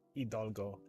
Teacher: You don't really pronounce the H sound in Hidalgo.